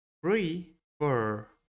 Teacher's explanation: La segunda sílaba es la que contiene el estrés o sílaba tónica